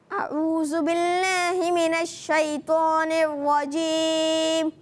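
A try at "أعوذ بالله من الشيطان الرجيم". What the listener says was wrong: تعوذ میں اعوذ نہیں کرنا، اعوذ زال صحیح کرنی ہے نا، ہم نے زال بھی صحیح کرنی ہے.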